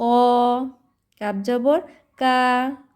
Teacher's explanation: কাপ হচ্ছে পাতলা করে কা